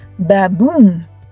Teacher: An unstressed syllable is softer, like ba in baboom.